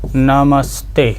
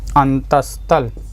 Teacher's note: इसमें तालव्य सकार न होकर के बच्चे दंती सा आ रहा है, तो दंती सा में ही बदल जाएगा